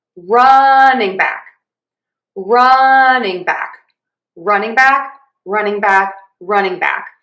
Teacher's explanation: So, to say running back, we are going to again stress run unstressing and then stress back